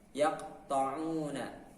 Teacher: pangkal lidah bertemu dengan langit-langit bagian atas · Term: huruf qaf